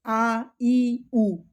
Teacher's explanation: जिनका उच्चारण केवल मुंह से किया जाता है जिसमें नाक का उच्चारण नहीं होता है अर्थात नाक से वायु नहीं निकलती है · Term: निरनुनासिक